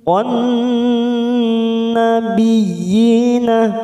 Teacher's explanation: Saqon, masuk pada lam ta'rif al-samsiyah, kita fokus pada huruf depannya. Ada huruf nun yang bertasdid, maka ini namanya bacaan gunnah musaddadah. Kita tekan 3 ketuk. On nabiyina, biyi, masuk pada huruf ya yang bertasdid tanpa ditekan lama-lama, hanya masuk biyi.